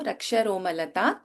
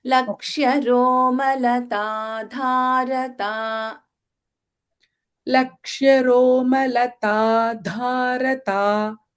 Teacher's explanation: Okay? So we have alpa prana ta, mahaprana dha, and then we have alpa prana ta.